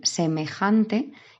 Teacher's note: el golpe fuerte en semejante está en la segunda sílaba empezando por el final por eso es llana vale está acentuada en la penúltima sílaba